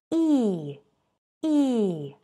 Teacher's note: передняя часть поднимается к твёрдому нёбу